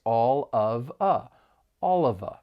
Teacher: can link the phrase all of a all of a and people are going to say say this a bit quicker and they're really just going to pronounce it all together